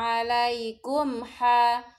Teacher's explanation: mim sukun bertemu huruf ha disebut idhar syafawi, mimnya gak boleh didengung-dengungkan, harus jelas.